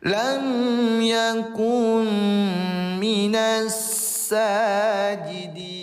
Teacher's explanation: nun mati bertemu mim bertasdid. Hukum tajwidnya namanya idgam bigunnaah. Dimasukkan ke huruf berikutnya lalu kemudian dengungkan dua harakat. Karena bigunna artinya dengan dengung.